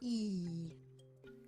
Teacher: o i é uma vogal palatal, ou seja, na hora de pronunciar a língua tem que chegar perto do pálato, no céu da boca.